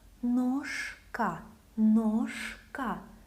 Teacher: Voiceless K makes letter Ž lose its voice, so it sounds as its voiceless counterpart.